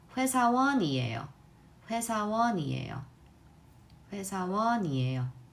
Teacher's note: do you hear how the N sound seems to carry over to the next syllable?